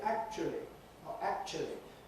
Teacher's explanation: typically with a schwa for the middle bit that looks as if it’s a diphthong in the dictionaries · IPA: [ˈækʧuli]